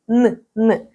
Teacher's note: коли ми вимовляємо н кінчик язика торкається піднебіння